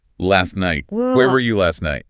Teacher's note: The T is trapped between S and N. Drop the T.